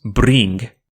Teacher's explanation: the vowel in bring tenses and becomes bring